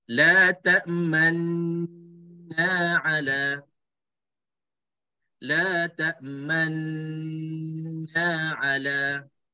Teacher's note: Dan cara yang kedua untuk ismam, kita dengung dulu 2 harakat. Dengung 2 harakat, selepas selesai dengung 2 harakat, muncung mulut seketika dan terus lompat pergi kepada na.